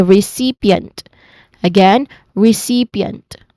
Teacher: the primary stress is on the second syllable